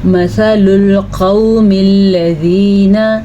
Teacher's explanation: مثل القوم الذین، قاف زبر وقو، یہ واو لین ہے اور قاف کو ہم نے موٹا یعنی کہ پر پڑھنا ہے